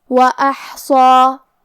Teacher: تو ہم صاد کو اور مد الف کو دونوں کو بھاری آواز میں پڑھیں گے